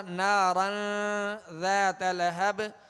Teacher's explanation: نارن ذات، یہاں تنوین ہے را کے اوپر 2 زبر کی اور آگے ذال حروف اخفا میں سے، ذال حروف اخفا میں سے، لہذا نارن ذات لہب. یہاں پر نارن پر غنہ کریں گے، یعنی آواز ناک میں لے جا کر چھپائیں گے اور اخفا کا غنہ کریں گے ایک الف کی مقدار میں.